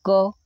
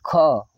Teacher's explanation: महाप्राण क्यों, देखिए, जैसे क बोलिए, क, तो क बोलने में तो हवा आपकी कम निकलेगी, लेकिन बोलेंगे ख, तो ख बोलते समय आपके मुख से ज़्यादा हवा निकलेगी। ठीक है, तो क को बोलेंगे अल्प प्राण और ख को बोलेंगे महाप्राण।